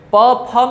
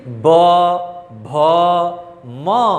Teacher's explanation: 5वां वर्ण बोल के देखिए कंपन हो रहा है। प फ में कंपन नहीं है इसलिए वो अघोष है, लेकिन ब भ म, ठीक है, इसमें कंपन है इसीलिए इसको कहा गया है सघोष